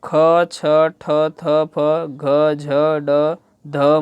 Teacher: इन सभी शब्दों को बोलने में हमें अधिक ऊष्मा की आवश्यकता होती है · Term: महाप्राण